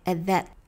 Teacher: at 和后面的 that 连起来， at that， that 结尾的 T 失去爆破没有读出来。